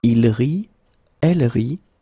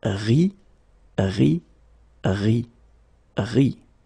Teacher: you don't pronounce this final ENT. And so phonetically, you get the sound RI.